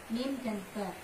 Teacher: Ini kedua bibir atas dan bibir bersama-sama. Ini bibir atas dan bawah itu bersama-sama melekat ya.